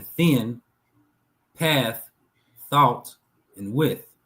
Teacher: The theta makes a sound as in thin, path, thought, and width. And this is the that's the voiceless uh th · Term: voiceless th